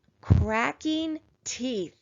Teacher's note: of the word we see digraph th and in this word digraph th is going to make its unvoiced sound so that means that it's going to be quiet